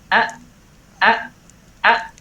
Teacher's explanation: hamzah ini keluar dengan cara terkatupnya pita suara. Kita bisa rasakan a. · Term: hamzah sakinah